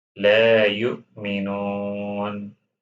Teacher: Hamza is not one of qalqala's letters. We don't need to make qalqala like jerking here on Hamza sukun.